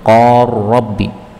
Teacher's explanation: lam ketemu dengan ra, ini boleh idgham